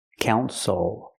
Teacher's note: The stress is only the first syllable. The second syllable is not stressed, so we don't say ill. We say o.